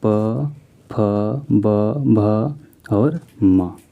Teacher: ओष्ठा। यानी कि जब आप दोनों ओष्ठ को सटाकर बोलिएगा तभी आप बोल सकते हैं